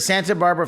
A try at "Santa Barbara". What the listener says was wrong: You're not supposed to pronounce the T in Santa Barbara.